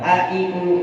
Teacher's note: Hamzah di mana? Tenggorokan bawah.